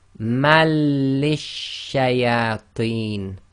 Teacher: So essentially what they've done for us here, they've put the shadda in for us on the first lam. So we drop the noon from the fatatain, so instead of saying man, we now say ma, and we join it to the lam with shadda, so we say malishayateen, so mali, so you're joining mali. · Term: assimilation